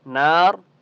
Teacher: تشدید ہے تو آپ نے یہاں پر غنہ کرنا ہے، نار، وقف کی صورت میں را کو آپ نے پر پڑھنا ہے